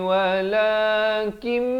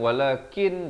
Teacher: Mutma'innun bil dua harakat, ma dua harakat, ni wala, ni nak keluar jangan lambat, ni walakim masuk beserta dengung di sini, bukan walakin jadi walakim, terus masuk ke dalam mim dan dengung dua harakat. Kemudian ikhfa hakiki di sini dua harakat.